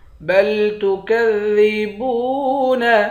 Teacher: با کو واو کے ساتھ ملا کر ایک الف کی مقدار کھینچیں گے، واو حروف مدہ ہے